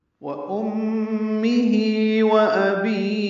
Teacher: واو ہونٹوں کی نا تمام گلائی سے